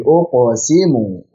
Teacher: Uqo tebalkan qafnya, pantulkan uqsimu dan qalqalah sughra jangan diputus. Jangan uqsimu tapi uqsimu.